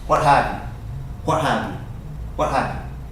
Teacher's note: say fast T sound disappears